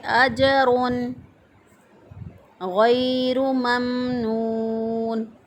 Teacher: را کے اوپر پیش ہے، را کو موٹا پڑھیں گے